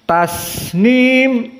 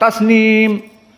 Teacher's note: sin sakinah maka dia sifatnya rokhawah seperti bismillah Maka ada rokhawah, ada jenjang waktu. Tasnim, jangan dibaca cepat, tasnim.